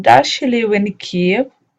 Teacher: rising tone in general question